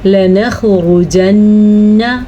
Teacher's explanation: خا جو ہے یہ حلق کے پہلے حصے سے نکلتا ہے، اسے ابتدائی حلق کا مخرج کہا جاتا ہے۔ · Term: حروف حلقی